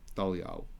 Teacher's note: For an Easterner, it will be pronounced as ow, like that.